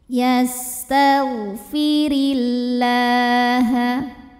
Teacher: maka cara bacanya tipis pangkal lidah tidak naik atau datar ya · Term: tarqq